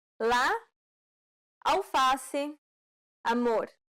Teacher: This vowel sound is very similar to the A in father. This vowel sound is considered an open A sound because the jaw is low